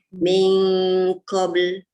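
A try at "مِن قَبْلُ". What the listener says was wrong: Tebal sikit lagi. Dia jangan ming aja. Bukan ming. Dia angkat pangkal lidah. Kalau ming tu dia jumpa kaf.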